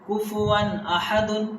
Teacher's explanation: تنوین کے بعد حروف حلقی میں سے حمزہ آیا ہے، یہ اس لیے یہاں اظہار ہوگا، یعنی ناک پہ آواز نہیں جائے گی